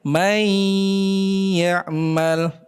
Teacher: Kemudian seraya kita sertai ghunah, kita tahan pada huruf yang kedua